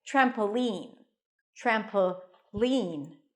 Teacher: on the first syllable trampoline trampoline that's how I say it you can also put the stress on the last syllable